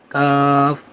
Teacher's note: زبان کی جڑ کی انتہا اور اس کے مقابل اوپر کے تالو سے کاف ادا ہوتا ہے۔ پڑھیں گے کاف۔ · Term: چھوٹا کاف